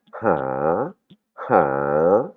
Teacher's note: ha comme si je me bouchais le nez